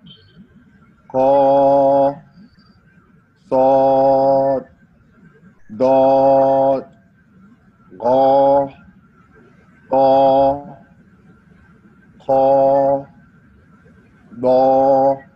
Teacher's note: Because while pronouncing them, a part of the tongue, mostly the back part of the tongue, rises up to the roof, makes the letter sound heavy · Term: heavy letters